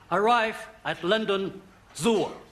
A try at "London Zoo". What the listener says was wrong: No, London Zoo. London Zoo. There are no O's.